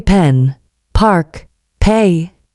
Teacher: The P and B sound P is a little explosion of air